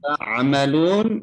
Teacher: Amalun, ainnya harus ditekan ya mengucapkan tolong Bapak Ibu sekalian, ketika mengucapkan huruf ain ada tekanan di tenggorokan ya. Bunyinya hamzah dan itu salah.